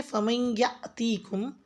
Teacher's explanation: فمن یأتیکم بماء معین میں میم کو یا سے ملاتے ہوئے ادغام یعنی کہ غنہ کی آواز کے ساتھ پڑھیں، اور یا کی الف کے اوپر جزم ہے تو جھٹکا دیں گے۔ فمن یأتیکم جھٹکے کی آواز کے ساتھ پڑھا جائے گا۔